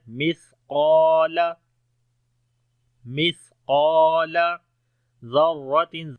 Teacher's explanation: سا کے اندر صفت ہمس ہے نرم پڑھیں گے، سانس جاری ہوگا ، قاف اور الف کو موٹا پڑھیں گے اور لمبا بھی · قاف اور الف کو موٹا پڑھیں گے اور لمبا بھی کریں گے